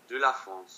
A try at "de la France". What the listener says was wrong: You're still thinking de la France. You're thinking individual sounds. De is a journey. La is a journey. France is a journey. De la France.